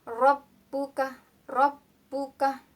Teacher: ada hukum bacaan ro berharokat fathah, maka hukum bacaannya ro tafkhim. Rabbuka, Rabbuka, tafkhim ya.